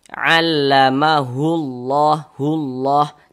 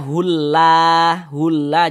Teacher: Huruf lam yang di tengahnya ini kita baca tebal, kita baca tabkhim. Huruf lam jalalahnya itu kita baca tebal.